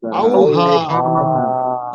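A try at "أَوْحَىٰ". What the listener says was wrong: আওহা। এই হাটা গলার ভেতর থেকে উচ্চারণ হবে, ঠিক আছে? এই হাটা গলার ভেতর থেকে উচ্চারণ হবে আওহা।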